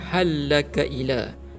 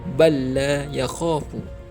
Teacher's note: So bacanya halaka ila. Lam yang pertama dimasukkan ke dalam lam yang kedua. Itu makna idgham, memasukkan.